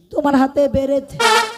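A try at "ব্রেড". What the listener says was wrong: আরে আমার হাতে একটা বেরেদ নয়, বল ব্রেদ।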